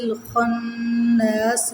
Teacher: خناس پہ پھر نون شدت پہ غنہ کریں گے اور الف مدہ کو کھینچ کے پڑھیں گے